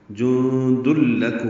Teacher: اور یہ ادغام کامل ہے، دال لام سے مل جائے گا · جند لکم، نون کی آواز ختم ہو جائے گی، میم ساکن پہ اظہار شفوی ہے۔